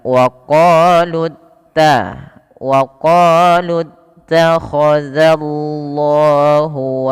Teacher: pada lafal waqolutta langsung ke ta tidak boleh dipanjangkan lut tapi langsung saja